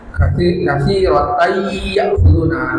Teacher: Katsiratan ya'khuduna dimasukkan, jadi tanwinnya masuk ke ya-nya, tidak dibaca tan tapi ya'khuduna